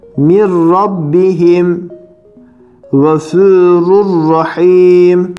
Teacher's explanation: Gunne genizden gelen ses, yani bila gunne demek. Gunnesiz olarak ne yapacağız? İki harfi birbirine katacağız. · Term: idgam bila gunne